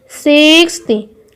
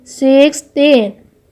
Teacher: 60 has its stress on the first syllable, 60, while 16 has its stress on the second syllable, 16.